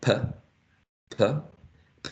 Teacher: For example, in the first sound, p, p, p is an initial position, right? P is a plosive sound, and p is aspirated.